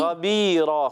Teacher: खा को मोटा रखना है और रा को पुर रखेंगे